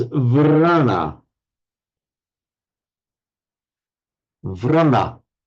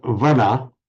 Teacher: at the beginning of a word, the Sanskrit vra just becomes a v in Pali